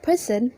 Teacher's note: the word person the stress is on the first syllable per